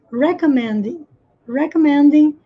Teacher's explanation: É aqui no me que tem que estar a ênfase. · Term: a sílaba tônica